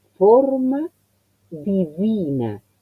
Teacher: El acento, ¿qué es lo que le va a dar la diferencia entre que sea forma divina, eso es en castellano, es una forma divina, y decirlo en italiano? Forma, O, he cerrado notablemente la O